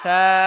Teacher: জিহ্বার আগা, দাঁতের আগা